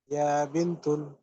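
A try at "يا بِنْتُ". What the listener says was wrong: ভাই এক পেশ, এক পেশ। ইয়া বিন্তু, এক পেশ।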